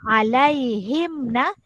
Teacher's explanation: kita baca tiada dengung tiada masuk tiada samar-samar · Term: izhar syafawi